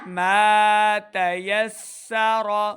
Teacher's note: سین پہ سیٹی کی آواز آئے، را کو پر پڑھنا ہے. را کی آواز کو لمبا نہیں کریں گے.